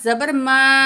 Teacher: मद के बाद हमज़ा दूसरे लेटर में है तो ये मद मुनफसिल है, तीन अलिफ के बराबर खींच के पढ़ेंगे